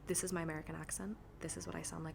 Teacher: it's a lot less consonants, a lot more dropping of syllables, a lot higher pitched, maybe more nasally